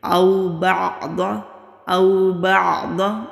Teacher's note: ضاد مستعلیہ حروف میں سے ہے، موٹا پڑھیں گے